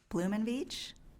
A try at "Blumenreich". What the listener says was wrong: No, it's close. It's an R, Blumenreich.